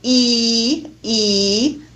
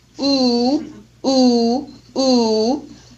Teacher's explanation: So the most spread vowel is E, E, and the most rounded vowel is oo.